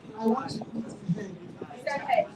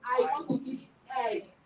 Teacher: He did not breathe out when he was pronouncing the word that starts with vowel sound.